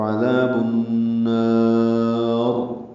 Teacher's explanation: عذاب النار ملانے کی صورت میں را باریک ہوگی کیونکہ را کے نیچے زیر ہے